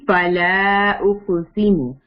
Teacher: فلا میں مدہ آ گیا ہے، 5 حرکات اسٹریچ کریں گے. اقسم قاف کے اوپر سکون ہے، قطب جدن یعنی کہ یہ قلقلہ لیٹر ہے.